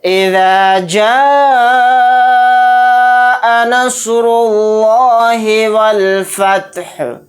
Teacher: یہاں پر دیکھیں الف مدہ کے بعد حمزہ اسی کلیمے میں ہے، تو یہاں پر مد متصل کا قاعدہ ہوگا۔ اس مد کو ہم 4 الف کی مقدار کھینچ کر پڑھیں گے۔